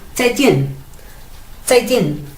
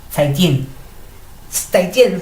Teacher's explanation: Los dos son tonos 4. Y cuando digo zaijian, los digo como un poquito como de arriba hacia abajo